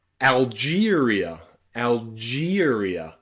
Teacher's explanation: You'll also find this in words with E followed by the letter R. E and R together can sometimes be pronounced with the diphthong ear.